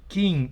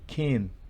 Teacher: Es una I que tiende a E